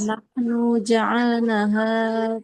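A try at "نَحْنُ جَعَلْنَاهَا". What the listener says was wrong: panjang. Nunnya panjang. Ja'alnaha panjang.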